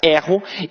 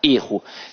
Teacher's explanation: o verbo tem a pronúncia aberta erro e que o substantivo tem a pronúncia fechada erro